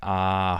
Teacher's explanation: a long steady state vowel like a tense vowel